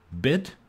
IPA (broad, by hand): bɪd